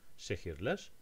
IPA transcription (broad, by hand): ʃehirler